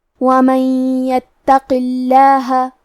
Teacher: حرف تا پہ تشدید ہے تو ہم 2 حرف کے برابر تا کو پڑھیں گے، آخری میں قاف کو موٹی آواز میں پڑھیں گے اور اسے صرف زیر سے پڑھیں گے، اور کیونکہ اس کے نیچے زیر ہے لہذا لفظ الجلالہ مطلب کلمت اللہ کے لام کا حکم ہے ترقیق تو ہمیں لام کو پتلی آواز میں پڑھنا ہے